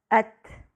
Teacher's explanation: تا کی ادائیگی میں ہوا جاری رہتی ہے